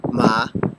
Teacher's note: the second tone is rising